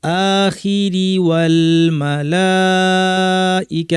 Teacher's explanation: আখিরি ওয়াল মালাইকা, এখানে লামের ছোট আলিফ আর উপর ঢেউ দেওয়া আছে। এই মাদ্দের নাম হচ্ছে মাদ মুত্তাসিল, 2 আলিফ। মুসা বলতে যতক্ষণ লাগে।